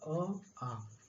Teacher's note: तो अ आ कहां से निकलता है? कंठ से निकलता है।